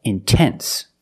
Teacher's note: I put the stress after the NT, so I have to pronounce the T.